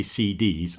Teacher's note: You'll see if I say CDs, I'm pronouncing C and D with equal emphasis. So I'm saying C, not sit.